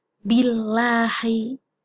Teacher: Yang kedua dalam jalalah akan dibaca tipis atau tarkik apabila didahului oleh huruf yang berharokat kasroh